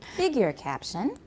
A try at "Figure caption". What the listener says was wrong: You have to go up because we're not done. Continuation rise.